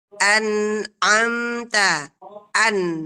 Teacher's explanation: annya mengalir, antara mengalir dan antara tertahan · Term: huruf nun